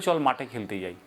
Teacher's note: কেউ ঠ বলে না, সবাই বলে চল মাঠে খেলতে যাই, ট হয়ে গেছে উচ্চারণটা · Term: অল্প প্রাণতায়